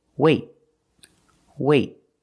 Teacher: Then we do a stop T. That means you put your tongue up in the T position, but you don't release.